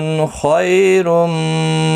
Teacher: خا مستعلیہ ہے، پر پڑھا جائے گا. خیالین ہے، تھوڑا نرمی کے ساتھ کھینچ کر ادا کریں گے.